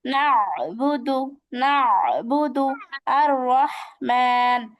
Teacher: হলকের মধ্যখান হতে আইন হা